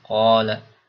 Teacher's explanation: Mad-mad tabi'i yang panjangnya dua harokat